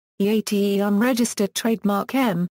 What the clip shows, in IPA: iˈtəm